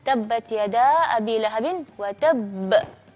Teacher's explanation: satu sifat istimewa huruf ba itu adalah alqalqalah atau memantulkan suara